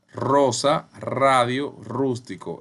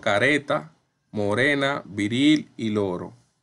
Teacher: un sonido con dos intensidades vibrante múltiple y vibrante simple la múltiple el sonido es r por ejemplo rosa radio rústico